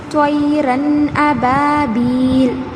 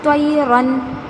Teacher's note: نون کی آواز کو ناک میں نہیں چھپائیں گے بلکہ ظاہر کر کے پڑھیں گے، اور جلد، اس میں جو ہے لمبا کرنے والی بات نہیں ہے، اس میں جو ہے غنہ کرنے والی بات نہیں ہے، بلکہ ظاہر کر کے جلد پڑھنا ہے، اسی کا نام اظہار ہے۔